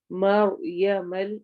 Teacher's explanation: مر رو ساکن ہے, اس سے پہلے فتح ہے, اس لیے یہ رو ہیوی پڑھی جائے گی